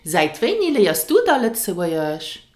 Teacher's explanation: it is subject to the n rule. So you will often hear da instead of dann.